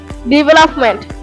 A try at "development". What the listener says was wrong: ও বলছে এটা ডেভেলপমেন্ট, এটা হবে ডিভা। ডেভেলপমেন্ট। ডিভা। ডেভেলপমেন্ট।